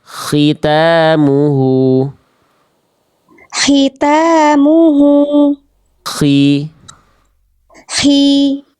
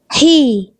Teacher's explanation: Dan harusnya kho itu lebih kasar sedikit, lebih kotor kalau kita ibaratkan.